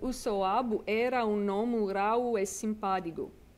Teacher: in Corsican, you have this process of softening or consonant lenition